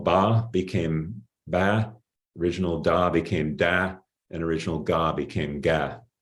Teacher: So B versus P, D versus T, G versus K. And after the original voiced stops in word initial position, the vowels fronted in these Abralian's law dialects